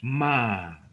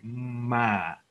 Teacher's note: tenemos que juntar la boca para tener ese sonido labial y nasal, decir ma, ¿sí?